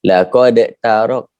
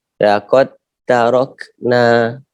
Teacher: diidghamkan dal tadi, dimasukkan dal tadi ke dalam huruf tak.